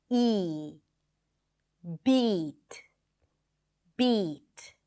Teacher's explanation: So let's begin with front vowels, and we're going to start with a high vowel sound. That means that the tongue rolls forward to produce that sound